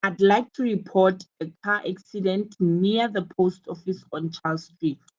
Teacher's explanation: notice how the keywords car accident post office and Charles Street street are stressed it's because these are the important details that the Emergency Services